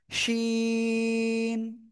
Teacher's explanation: এরপরে শিখেছি জিব্বার মধ্যখান উপরে তালুর সাথে লাগিয়ে সা সা শব্দ করে তিন আলিফ টানে উচ্চারণ করেছি